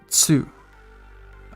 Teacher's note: exception for the top column uh it's pronounced tsu uh it's instead of saying two uh you would say two so you kind of combine the t and s sound to make it like that like you're doing a little drum